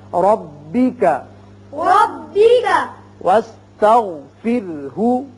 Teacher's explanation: اب وقف نہ کرنے کی صورت میں تو ہا کے اوپر پیش ہے، لیکن جب وقف کریں گے تو ہا ساکن ہو جائے گا